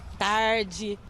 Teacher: como que é o sotaque daqui é o r bem puxado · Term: r caipira